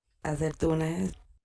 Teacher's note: cuando la I se fortifica, como en la palabra acetuna, como acertuna, la gente lo reconoce otra vez como algo del sur o de otro país.